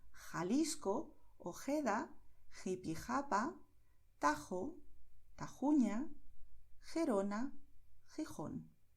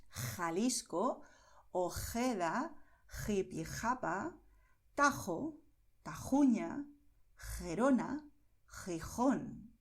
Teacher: Es un sonido de garganta que sale de la mitad de la garganta, pero es un sonido suave, como en inglés cuando dices hot.